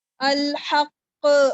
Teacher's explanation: ایسا نہ ہو کہ آپ تشدید کا حق ادا کرتے کرتے حمزہ کی ساؤنڈ لے آئیں بیچ میں